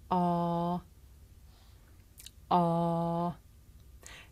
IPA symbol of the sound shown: a: